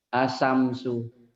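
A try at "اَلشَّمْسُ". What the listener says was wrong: Asamsu. Padahal di sini ada pendobel. Ingat? Nah, fungsinya pendobel itu nyamber dan dobel. Asyamsu. Asyamsu. Perasaan sudah kaki itu sudah ninjak tapi belum gitu ya. Asyamsu alif lam apa? Cirinya dulu, cirinya kenapa?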